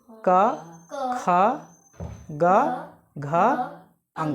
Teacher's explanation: ये सारे जो वर्ण हुए, ये कहाँ से बोला जा रहा है? कंठ से। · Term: कंठे वर्ण